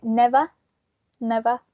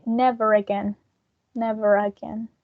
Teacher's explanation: in a non-rotic accent we will say never never but because of the vowel sound we say never again never again so we are going to pronounce the final r sound